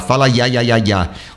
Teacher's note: a tua língua encosta nas laterais para fazer esse ya, ya, ya.